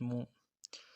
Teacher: میم پیش مو، میم کو نرمی سے ادا کرنا ہے، پیش میں ہونڈوں گول کرنا ہے